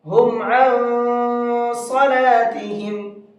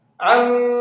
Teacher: اس لیے کہ یہاں پر یہ نون ساکن ہے اور نون ساکن کے بعد میں صاد ہے، صاد اخفا کے حرفوں میں سے ہے، تو نون ساکن کے بعد میں اخفا کے حرفوں میں سے کوئی بھی حرف آ جائے تو پھر وہاں پر نون کی آواز کو ناک کے اندر چھپا کر کے پڑھتے ہیں۔ عن، اس طرح سے ناک میں جو میں پڑھ رہا ہوں اس کو اخفا کہا جاتا ہے۔